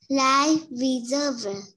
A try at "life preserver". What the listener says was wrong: Preper nó là per nha, không được quên chữ per. Pre. Server. Server. Âm z. Preserver.